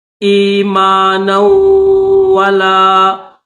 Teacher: مد ہے تو تھوڑا سا کھینچیں گے، آمنوا ایمانا ولا، نون کو واو کے ساتھ ملائیں گے